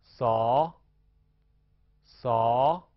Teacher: 舌尖贴近下齿背，气流从舌面和上齿背间摩擦而出